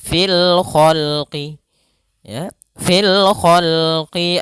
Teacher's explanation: Alif lam qamariyah, yaitu alif lam yang ditulis dan dibaca sehingga suara lamnya terbaca dengan jelas.